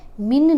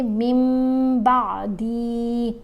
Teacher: جب بھی نون ساکن یا نون تنوین کے بعد حرف با آ جائے تو ہم نے نون کی آواز کو میم کی آواز سے بدل کر پڑھنا ہوتا ہے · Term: قلب